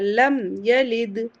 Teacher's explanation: یا کو جلدی سے پڑھیں گے اور دال پر رکیں گے تو قلقلہ ہوگا